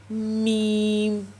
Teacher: दोनों होटों को जोड़ के मीम